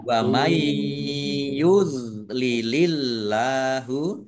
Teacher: nun sukun bertemu dengan huruf ya, bacaan idgham bi gunnah, masuk dengan mendengung, yaitu mendengung ya, ditandai yaknya ada tasdidnya, ditahan biar tampak dengungannya.